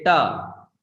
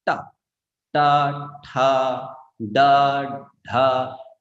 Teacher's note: The tongue touches right the center of the palate. Right? Ta, and it's very strong actually.